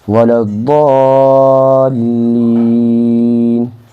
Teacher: ضاد کو کھینچیں گے کیونکہ یہ مد لازم ہے